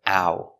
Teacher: the sound ow is two sounds. It's a like apple and oo like boot.